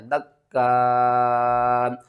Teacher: اس کو آپ نے 5 الف کے برابر کھینچ کر پڑھنا ہے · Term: مد متصل